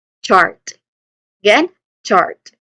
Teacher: And then there's also a letter R sound next to it. And then you end it with a clear T sound made by placing the tip of your tongue against the ridge behind your upper teeth and releasing the air sharply